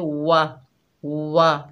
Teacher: वाव को होंठों की ना तमाम गुलाई से अदा करेंगे, होंठों को गोल करेंगे